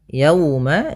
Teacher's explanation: ada wau sukun didahului dengan fathah maka ini bacaan lin yang di mana kita lembutkan dalam melafalkannya